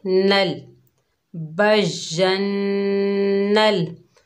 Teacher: नून के ऊपर ज़बर है, आगे लाम साकिन है, नून को लाम से मिलाएंगे। जज़म वाला हर्फ हमेशा एक मरतबा पढ़ा जाता है, अपने से पिछले मुतहरिक हर्फ से मिलकर।